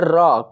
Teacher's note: र वर्ण का जो उच्चारण होता है वो कहाँ से होता है, तो वो होता है दोस्तों मूर्धा से।